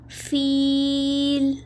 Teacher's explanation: اس مد عارض کو ہم 5 الف 7 الف یا 3 الف برابر کھینچتے ہیں